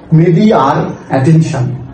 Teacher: এখানে মিডি আর অতিরিক্ত র উচ্চারিত হচ্ছে, আর এটাকেই বলা হয় ইন্ট্রুসিভ আর